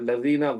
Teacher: ہلکا سا زبان کا اگلا حصہ جو ہے وہ دانتوں سے لگتا ہے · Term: ذال